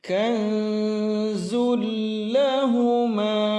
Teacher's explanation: kanzul ini idgham bila gunnah maka tidak ditahan lama